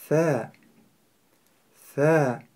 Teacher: «С» – это потому что кончик языка расположен во время произнесения между передними зубами. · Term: межзубная буква